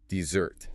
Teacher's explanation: for dessert, the sweet cake you eat after dinner, the weight shifts to the very end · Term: stress